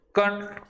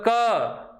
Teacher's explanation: फिर आपने बोला कण, ध्वनि नाक से भी निकलेगी। लेकिन आप बोलो क, तब ध्वनि केवल कहाँ से निकल रही है? नाक से नहीं, केवल मुख से निकल रही है। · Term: निर्नुनासिक